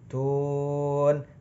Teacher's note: karena di akhir kalimat jadi namanya mad arid lis sukun. Boleh dibaca 2, 4 atau 6 harokat.